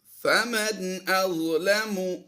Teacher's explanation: نون ساکن کے بعد حمزہ آ گیا، یہاں پر ہم نے اظہار کرتے ہوئے پڑھنا ہے